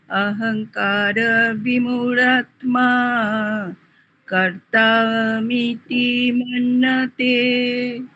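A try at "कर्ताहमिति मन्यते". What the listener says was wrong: হ্যাঁ, এই এই হটা কর্তা অহম, এইখানে কিন্তু এটা লুপ্ত অকার নয়, লুপ্ত অকারে হয়ের মাত্রা থাকে না। এটা হটা স্পষ্ট করেই উচ্চারণ করবেন। কর্তাহম, কর্তাহমিতি মন্যতে, কর্তাহমিতি মন্যতে।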